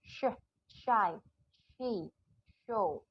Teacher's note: Saya pakai blade of the tongue atau daun lidah samping kanan kiri. Oke, pasifnya adalah back of alveolar ridge di sini. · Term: palato-alveolar